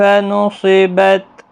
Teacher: نُصِبَت صاد مستعلیہ ہے، پر پڑھا جائے گا، وقف کی حالت میں تا ساکن ہی رہے گا۔